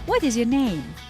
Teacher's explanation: so the tone of my voice fell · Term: falling